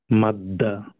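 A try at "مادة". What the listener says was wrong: Very good, আমরা পড়বো হচ্ছে মাদ্দা। মাদ দা এরকম পড়বো না।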